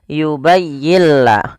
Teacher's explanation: Maka apabila ada suara, maaf ada nun mati bertemu lam, suara nunnya kita hilangkan dan kita masukkan langsung kepada huruf lamnya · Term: idgham bila ghunah, idgham bila gunnah